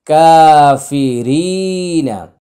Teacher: কা হচ্ছে এক আলিফ টান, রি হচ্ছে এক আলিফ টান, নাটা হলো তাড়াতাড়ি।